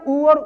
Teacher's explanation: ये ओष्ठ से बोले जाते हैं या होठ से बोले जाते हैं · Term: ओष्ठ वर्ग